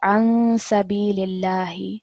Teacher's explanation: So if we go back to our table, sin again is in our second table. So we are doing ikhfa over here. We want a light nasal sound.